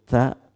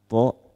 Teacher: Ujung lidah menyentuh pangkal gigi atas. Bedanya kalau ta keluar udara, kalau to tertahan.